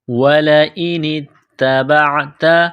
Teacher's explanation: نون کو تا کے ساتھ پلس کرنا ہے، تا کو دبانا ہے